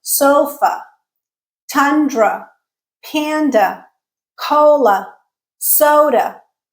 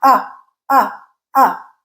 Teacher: The a is becoming the schwa sound.